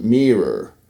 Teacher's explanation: So the I in mirror is pronounced higher up in the mouth as an E sound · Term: mirror-nearer merger